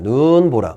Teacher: 첫 번째 음절에서만 긴 소리가 나고 그 뒤에서는 짧은 소리가 난다.